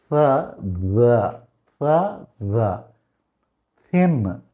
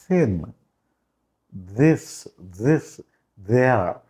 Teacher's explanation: సాగుత్సా అంటే నాలుక పంటి కంటే కొంచెం వెనక్కి తగలాలి, ఎయిర్ రావాలి.